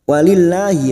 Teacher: lam jalalah yang sebelumnya kasroh kita baca tarkik